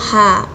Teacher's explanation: terjadi penyempitan dinding faring dan akar lidah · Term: faringal